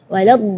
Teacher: huruf dhad itu keluarnya dari pinggir lidah maupun yang kanan ataupun yang kiri atau dua-duanya